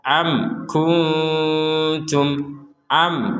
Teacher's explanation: am kunum syuhadaid had yaqubal maut kita berhenti sebentar di sini ada mim sukun bertemu dengan Kaf maka kita membacanya dengan jelas ya harus dibaca jelas jangan sampai kita membaca dengan samar amku atau dibaca dengan mimnya · jadi tidak ada pantulan, tidak ada huruf e-nya.